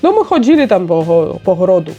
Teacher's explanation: У іх вельмі цікавае оканне ёсць. То бок у іх беларускі акцэнт з оканнем.